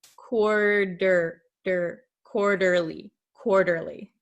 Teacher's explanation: So it sounds like an English um soft D sound. In your country it might sound like an R but in English it sounds like a soft D. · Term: flap T